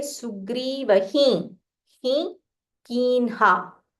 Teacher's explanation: When you use a nasal ha, it's very easy to join with कीन्हा.